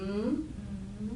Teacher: to make the M sound, I want to see lots of air coming through the nose